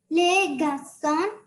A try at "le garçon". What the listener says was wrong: Oui. Not les, le garçon.